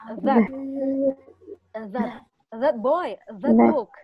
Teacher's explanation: bunyi the ini, lidah kita sedikit menyentuh gigi atas.